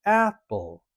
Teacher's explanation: We have a higher tone on the a part, apple. If you say apple or apple, you're putting the emphasis on the wrong syllable, but you're also changing the tone.